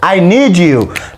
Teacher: Horta haddii aad aragtaa my student, D iyo U xagga dambe hadday iska yimaadaan English marka la joogo siba American accent, D iyo U hadday iska yimaadaan waxaa loogu dhawaaqaa ja oo kale